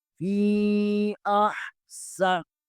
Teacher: سین حروف صفیریہ میں سے ہیں، سین ادا کرتے ہوئے سیٹی کی آواز آنی چاہیے۔ فی احسن، نون زمنی، نون کے نیچے زیر ہے، اسے بریک پڑھیں گے۔